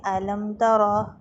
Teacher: میم کے بعد تا آ رہی ہے تو ظاہری سی بات ہے میم کو یہاں پر بھی اظہار کے ساتھ پڑھیں گے